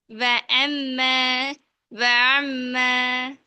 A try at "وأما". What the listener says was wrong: ஐனு கிட்ட நீங்க அலிஃபை கொண்டு போயிட்டீங்க. وأما அந்த கிட்ட கிட்ட ஆயிட்டு அந்த கேப் தூரமாகணும். ம் ரெண்டு மாதிரி ரெண்டு ரெண்டு ரெண்டு மாதிரி உச்சரிங்க. அப்பதான் உங்களுக்கு விளங்கும் வித்தியாசம். முதலாவது அலிஃப்.